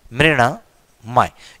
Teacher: न के पहले री स्वर होने की वजह से न हमारा ण में बदलता है और इसका अगला आंसर रूप इस तरीके से बन जाता है मृणमय।